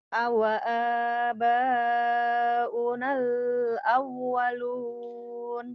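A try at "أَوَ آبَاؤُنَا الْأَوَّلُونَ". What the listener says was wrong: Bagus, tapi unalnya jangan ditahan. Alif lam komadiahnya. Jadi harf komadi. Awa aba unal awalun. Unalnya jangan ditahan. Yo, lepas.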